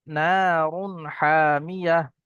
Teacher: নুন আলিফ জাবার না, আলিফ মাদ্দা একালি পরিমাণ টান হবে